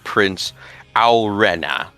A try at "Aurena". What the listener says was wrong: What's with that drawl? Aurena.